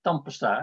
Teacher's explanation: Eerst wordt die D, wordt een, aan het eind van de eerste lettergreep wordt een T, maar een T in een cluster van medeklinkers verdwijnt, en dan staat de N voor de P, en dan wordt de N door assimilatie van stem en M.